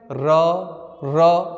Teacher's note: एकमात्र र ऐसा है जिसको हम लोग एक बार में नहीं बोल सकते बोलेंगे तो जीभ काप जाएगा इसलिए इसको कहते हैं लुंठित या प्रकल्प